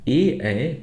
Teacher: ए ऐ कंठ तालव्योह ए ऐ का उच्चारण स्थान कंठ और तालु है। एतयो उच्चारणम उभयोह कंठ तालु स्थानयो भवती इनका उच्चारण दो जगह से होता है।